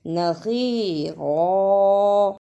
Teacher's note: نصیرا، اسے نصیرہ نہیں پڑھنا، صاد کی جگہ پہ سین کی آواز نہیں آنی چاہیے، صاد کو موٹا پڑھنا ہے